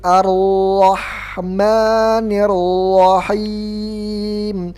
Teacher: ujung lidah itu pasti bergetar dia pasti bergetar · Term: tikrar